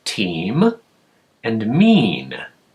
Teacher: they both have the same e sound in the middle but that ending sound it's a little different one's an m and one's an N so that's close but it's not quite a rhyme the same